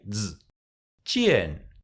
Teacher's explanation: We put the tip of the tongue behind the lower teeth and we say z.